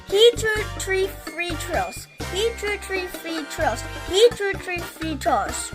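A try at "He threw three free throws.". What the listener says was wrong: Not bad.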